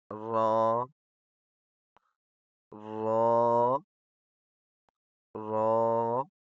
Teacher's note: اس کو موٹا پڑھنا ہے اور نرم پڑھنا ہے